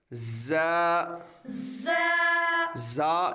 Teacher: زا، ز، زا یہ حروف صفیریہ ہے، اس کو جب ہم ادا کریں گے تو سیٹی کی طرح تیز آواز نکلے گی